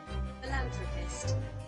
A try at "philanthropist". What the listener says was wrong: No, not the the roll of the R.